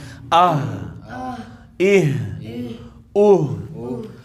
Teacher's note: ہا ہم نے پڑھا تھا حلق کے سب سے نیچے والے حصے سے ادا ہوتا ہے ، یعنی سینے کی جانب سے آواز سینے سے اس طریقے